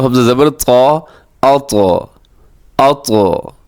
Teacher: قلقلہ بھی ہو رہا ہے اور موٹا بھی